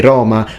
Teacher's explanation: the way they pronounce it back in the day would be with an open O, longer of course, so Roma, Roma rather than Roma.